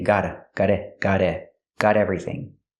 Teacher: you can change the T to a fast D because it's between vowels.